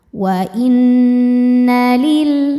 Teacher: Jadi ini lamnya tasydid ya. Sebetulnya lamnya ada 2, lam sukun dan lam fathah. Yang sukun gak dibaca, masuk langsung ke lam kedua. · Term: alif lam syamsiyah